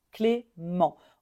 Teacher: on ne prononce pas le T à la fin